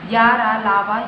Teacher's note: जिन व्यंजनों का उच्चारण करते समय वायु मुंह के किसी भाग का स्पर्श नहीं करती, ना ही वायु रगड़ खाकर निकलती है, उन्हें अंतःस्थ व्यंजन कहते हैं।